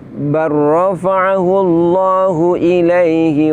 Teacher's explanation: farrahu disitu kita dapati lam sukun bertemu dengan huruf rok dimana Lam sukunnya tidak kita baca tetapi kita idghomkan kita leburkan ke huruf ro · Di situ kita dapati lam sukun bertemu dengan huruf ro, di mana lam sukunnya tidak kita baca, tetapi kita idghamkan, kita leburkan ke huruf ro. Dalam ilmu tajwid ini kaidahnya adalah idgham mutaqaribain, yaitu leburnya huruf ke huruf yang berikutnya, atau leburnya huruf sukun ke huruf berharokat setelahnya dikarenakan makhrajnya berdekatan.